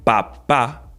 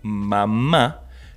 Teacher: nuestro velo de paladar se mantiene cerrado, ya que impide la salida del aire por la nariz. En cambio, cuando decimos mamá, nuestro sonido debe salir por nariz para poder seguir emitiendo el sonido de la M.